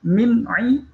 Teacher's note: ada nun sukun bertemu dengan ain, ini tidak boleh dengung, ya. Izhar halqinya.